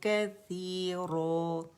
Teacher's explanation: را موٹی پڑھیں گے ٹھیک ہے، اور را کے مخرج پہ جا کے ادا کریں گے، ہونٹ استعمال کیے بغیر